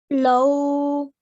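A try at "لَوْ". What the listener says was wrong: Very good, mashallah.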